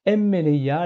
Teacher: De même, dans le préfixe n qui veut dire dans, en, sur, eh bien nous avons un nu, et ce nu est assimilé régressivement par le mu qui commence le radical de meleia